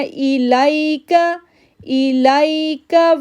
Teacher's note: یہاں پہ لائی پڑھنا ہے کیونکہ یا ساکن سے پہلے زبر ہے، لین لیٹر ہے